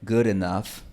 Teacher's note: esta D tiene un tiempo de contacto más corto. Puede ser tan baja como unos 20 milisegundos.